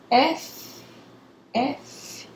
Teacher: mal posicionados esse fonema tá comprometido se eu falar f f o lábio inferior sobe e toca na borda dos incisivos